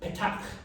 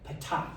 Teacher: But with the petach, you gotta put the plosives. You gotta build up some pressure back there and then release it with kind of like a K.